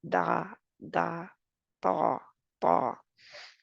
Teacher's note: तालू की तरफ आवाज का प्रेशर होता है होना चाहिए बल्कि जो हल्के उला है ऊपर वाला उसकी तरफ ना हो